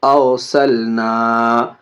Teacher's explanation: را کو تھوڑا سا گول کر کے، موٹا کر کے اس کو پر بولتے ہیں